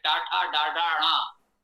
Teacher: ट वर्ग का उच्चारण स्थान मूर्धा है